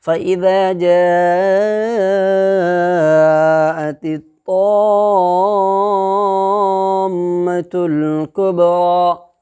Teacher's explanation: مد لازم کو کلمی مثقل کو 3 سے 5 الف کے برابر کھینچ کر کے ادا کریں گے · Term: مد لازم کلمی مثقل